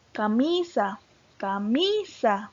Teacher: tiene el acento en la penúltima o en la segunda posición